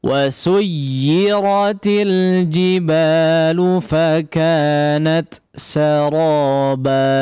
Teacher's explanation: Selesaikan dulu hams daripada huruf ta-nya baru masuk kepada huruf sin ya